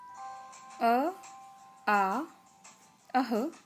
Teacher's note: अ, आ, अह, क वर्ग के सभी अक्षर और ह ये सभी वर्ण कंठ्य कहलाते हैं और इनका उच्चारण स्थान है कंठ और जीभ के नीचे का भाग